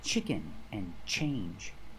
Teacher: like Tu e or Tua as the second or third syllable the t is pronounced chch like chicken and change